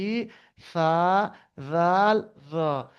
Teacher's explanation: জিহ্বার আগা উপর দাঁতের আগার সঙ্গে লাগিয়ে তিনটি অক্ষর বাইর হয়